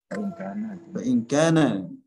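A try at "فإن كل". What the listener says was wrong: Yang benar fa inna kulla. Oh benar, kulla yang benar. Yang benar kulla bukan kana.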